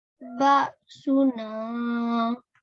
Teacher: this alif here is alif madiyah, and we're going to read it with 2 seconds, for 2 seconds